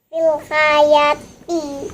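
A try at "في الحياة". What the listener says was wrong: Mana panjang?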